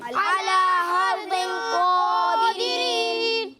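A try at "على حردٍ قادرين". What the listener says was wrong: अच्छा, ये हर दिन नहीं है। ठीक है, हा की अदायगी वाज़ेह होनी चाहिए। ठीक है, हर दिन क़ादिरीन। वग़दौ अला हर्दिन क़ादिरीन।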